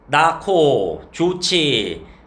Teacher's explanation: 히읗이 앞에 와도 거센 소리 되기는 일어난다